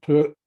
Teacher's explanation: put an imperative marker glottal stop on it